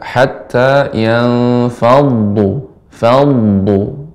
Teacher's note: harus kita alirkan sifat d juga selain tebal isti'la dan juga dia sifatnya mengalir rakhawah. Sehingga kita baca hatta yanfadu fad tapi tidak disertai dengan monyongnya bibir. · dhad merupakan huruf isti'la, kemudian ketika ada tasydid pada huruf dhad maka dibaca dengan tebal , ya. Kita baca hatta yanfaddu, faddu. Nah, di sini harus